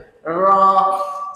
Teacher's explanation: Itu takrir yang ditegah. Dia takrir hanya sekali getaran dia, tidak melebihi 2.